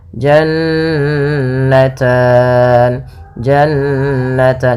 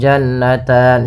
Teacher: suara nunnya ditahan 2 harokat. Jannatan, jannatan, jangan langsung jannatan, sering terjadi tidak menahan gunnahnya. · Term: bacaan gunnah